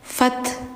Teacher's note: Ada hames, ada angin mengalir